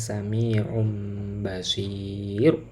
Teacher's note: agar tanwin itu dibaca mim ya. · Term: iqlab